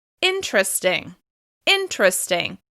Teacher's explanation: I'm stepping down from the stressed syllable